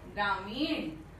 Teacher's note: न नहीं, मूर्धन्य ण, अण, अण का उच्चारण कर रहे हैं, ग्रामीण, तो लिखना भी चाहिए ग्रामीण।